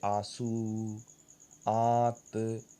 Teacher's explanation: अनुनासिक के उच्चारण में नाक से बहुत कम सांस निकलती है और मुंह से अधिक।